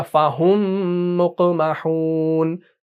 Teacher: इस मीम साकिन के बाद मीम मुशद्दद आ रहा है, मुतहर्रिक है, तो इस मीम को हमने इस मीम के अंदर मर्ज कर दिया, तो ये बन गया फ़हुम मुक़महून। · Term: इदगाम शफवी